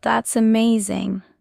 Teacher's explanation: When natives say, That's amazing, they stretch vowels, lift tone, and show excitement.